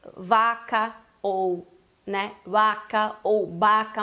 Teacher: Normalmente o que eu mais vejo é esse intermediário entre V e B. Quando começa a palavra com o V ou com o B, costuma ser mais forte do que no meio da palavra